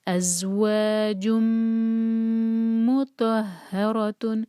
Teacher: جیم کو میم سے جوڑیں گے، جم، ادغام ہے غنہ کے ساتھ اور یہاں میم کے ساتھ۔